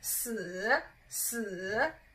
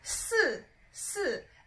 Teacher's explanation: it's a third tone. And then the number 4, which is 四, 四, is a fourth tone.